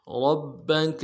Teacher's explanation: را کو موٹا ادا کرنا ہے، را کو با کے ساتھ ملانا ہے، با کے اوپر تشدید ہے، زور دیں گے